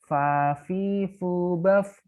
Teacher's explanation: Fa itu makhorijul hurufnya gigi ketemu bibir. Bibir bawah bagian dalam. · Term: huruf fa